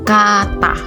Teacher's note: Vokal A rendah atas tak bundar pada kata kata